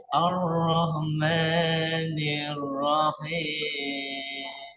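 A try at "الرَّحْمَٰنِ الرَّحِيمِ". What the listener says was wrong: Emaknya hanya 2 harokat. 1 kali ayun aja. Ar-Rahmanir-Rahim. Jangan terlalu panjang.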